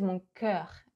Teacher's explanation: He opens way too much the vowel. We would say mon cœur.